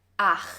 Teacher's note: The CH sound in 8 is produced here in the back of your throat. 8. So you should feel it right here when pronouncing it.